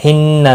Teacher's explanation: नून मुशद्दद पर गुन्ना होगा। लाम साकिन को हिलाना नहीं।